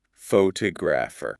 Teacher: The pho at the beginning got really small. · The stress moved to the second syllable, t o.